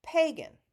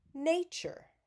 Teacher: pagan pay is the stressed syllable nature nay is the stressed syllable